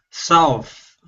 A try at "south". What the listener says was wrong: That's better. Yeah, so just a bit more of an ow noise, okay?